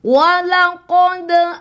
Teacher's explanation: kolkolanya dikeluarkan, kolkolah sugro ya